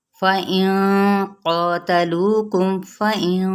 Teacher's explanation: یہاں پہ اخفاء پر ہوگا کیونکہ آگے قاف ہے